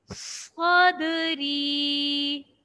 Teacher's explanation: صاد میں سیٹی کی بھی آواز اور صاد کو موٹا بھی پڑھا جائے گا۔